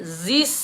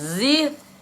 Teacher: kalau mati macam tu, lidah, hujung lidah tak keluar sedikit, dia jadi huruf sin. Keluarkan sedikit.